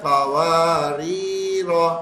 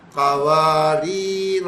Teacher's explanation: اور ایک آخری بات اس کی، سورہ دہر میں 2 جگہ پہ قواریر آ رہا ہے، 2 جگہ۔ پہلا والا جو آ رہا ہے اس کے اندر الف کو نہیں پڑھیں گے کیونکہ رواں چل رہا ہے، اور دوسرے والے میں جہاں رکنا ہے اس میں الف کو پڑھ لیں گے۔ وقف کرنے میں پڑھا جائے گا، اور وصل کرنے میں یعنی جہاں نہیں رک رہے وہاں نہیں پڑھا جائے گا۔